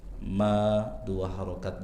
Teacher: Mim bertasydid dibaca dengan ghunah minimal dua harakat.